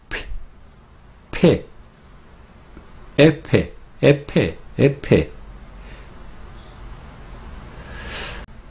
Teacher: en Corea, la F tenemos bilabial, oclusiva y sorda.